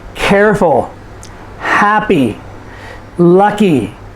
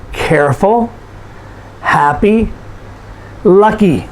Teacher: so these are adjectives and you'll notice that we stress the first syllable